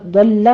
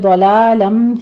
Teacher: لام کے اوپر تشدید ہے، سختی کیجئے لیکن آپ نے لام کو موٹا نہیں کرنا۔ اسی طرح آگے ضلالم ہے، اس کو آپ نے دولو نہیں پڑھنا، موٹا نہیں کرنا، لام باریک رکھنا ہے۔